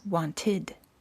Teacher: the e d is pronounced as a separate syllable with an id sound